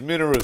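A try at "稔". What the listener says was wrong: Minoru. You put the emphasis on the wrong ooh. Minoru. It's like Minora. Minoru.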